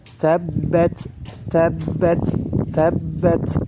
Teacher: Sifatnya yang pertama adalah sifat hams. Nafasnya keluar ketika mengucapkan huruf ta.